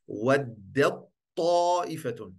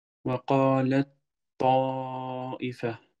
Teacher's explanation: De ta heeft een sukoon. Ta verdwijnt in de uitspraak. Je gaat gelijk van de da naar de ta. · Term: Idgham al-saghir